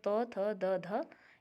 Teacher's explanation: जो आपकी जीभ है वो दंत पर लगती है तो उन्हें दंते कहा जाता है